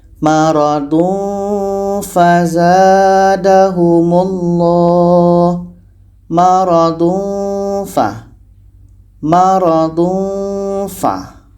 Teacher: Bunyinya samar, mendekati tempat keluar huruf fa.